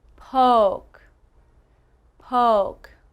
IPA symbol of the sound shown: oʊ